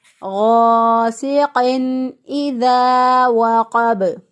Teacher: حمزہ جو ہے یہ اقصی حلق سے ادا ہوگا، یعنی گلے کا وہ حصہ جو کہ سینے کی طرف ہوتا ہے وہاں سے حمزہ ادا ہوگا۔